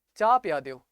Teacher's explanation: ਆਪਾਂ ਕਹਿੰਦੇ ਆ ਚਾਹ ਪਿਆ ਦਿਓ, ਹਾਹਾ ਉੱਥੇ ਬੋਲਦੇ ਨਹੀਂਗੇ। ਠੀਕ ਹੈ ਨਾ, ਤੇ ਉਸੇ ਤਰੀਕੇ ਨਾਲ ਸਹੂਰਾ ਲਿਖੀਦਾ, ਆਪਾਂ ਬੋਲਦੇ ਹਾਂ ਸਹੁਰਾ। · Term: ਗੂੜ ਲਿਪਾਂਕ